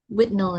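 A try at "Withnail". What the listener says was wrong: I was about to say you almost never pronounce the h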